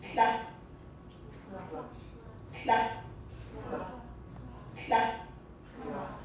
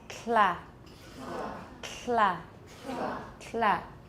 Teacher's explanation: All right, so make a T and don't lower your tongue. Keep your tongue tip on your alveolar ridge to make the L, and there will be aspiration as well. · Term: lateral release